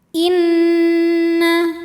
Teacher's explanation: atau wajibul gunah atau Nun musyaddadah ya karena nunnya bertasdid maka cara bacanya didengungkan jadi bunyi n tahan sampai ada suara masuk hidung kurang lebih dua harakat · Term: gunah musyadadah